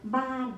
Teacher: This word comprised from initial consonant sound b, plus vowel a, plus final consonant n, and falling tone.